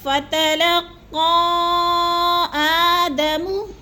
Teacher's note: حروف مدہ کے بعد حمزہ دوسرے کلمے میں آ گیا ہے تو مد منفصل 4 الفی مد ہے، 4 حرکات کے برابر ہم نے اس کو لمبا کرنا ہے